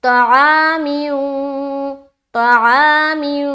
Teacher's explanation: تو کو منہ بھر کر بولنا ہے